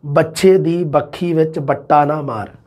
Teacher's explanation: ਵੈ ਨੂੰ ਬੈ ਬੋਲਣ ਦੀ ਪ੍ਰਵਰਤੀ ਹ ਇਹਨਾਂ ਦੀ